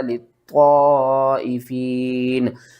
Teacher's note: یہاں پر ہم نے طا کو موٹا کر کے بھی پڑھنا ہے، مد بھی کرنی ہے کھینچ کر